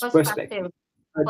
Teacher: you don't even have to pronounce the R sound